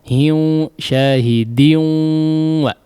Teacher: Syahidin wa, di sini idgham bi ghunnah. Maka dimasukkan khayshum ghunnahnya ya.